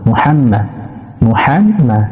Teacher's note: গলার মাঝখান হইতে হা বাতাস বের হবে। মিম পেশ মু, হা মিম জবর হাম, মিম জবর মা, মুহাম্মা।